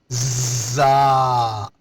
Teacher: زا کا مخرج زبان کی نوک اور نیچے والے دانتوں کی جڑ، زا، سیٹی کی سی آواز آئے گی۔